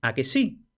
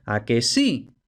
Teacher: puede ser una entonación ascendente o también puede quedar en suspenso